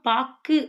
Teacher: சொல்லுக்கு இறுதியில் வரும்போது ஒரு மாத்திரைக்கு பதிலாக அரை மாத்திரை அளவே ஒலிக்கும் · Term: குற்றியலுகரம்